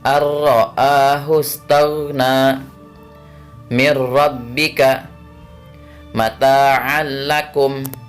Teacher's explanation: bunyi nun sukun dan tanwin dimasukkan ke dalam huruf berikutnya tanpa dengung ketika bertemu huruf lam dan ro. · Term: idgham bila gunnah